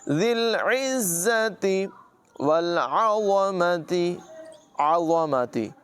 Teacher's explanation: عین کی آواز حلق کے درمیان والے حصے سے نکالیں گے۔